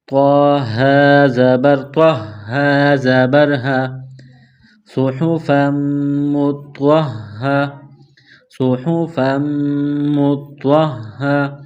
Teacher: اس کے بعد ہا ہے چشمے والی گول ہا کے اوپر تشدید ہے، ہا مشدد ہے تو تو کو ہا کے ساتھ ملائیں گے تشدید کی وجہ سے